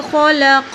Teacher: خا اور قاف کو موٹا پڑا جائے گا